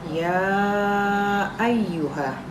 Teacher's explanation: Ya ayyuha di sini adalah hukum bacaannya, yaitu karena ini ada dalam satu kata, maka hukum bacaannya adalah mad wajib muttasil. Di sini cara membacanya itu panjang sebanyak 5 sampai 6 harokat.